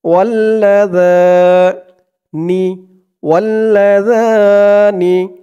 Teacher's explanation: জালের উচ্চারণটা একদম নরম পাতলা করতে হবে, জিহ্বার মাথা ওপরের দাঁতের মাথার সাথে লাগবে জালের উচ্চারণটা করার সময়।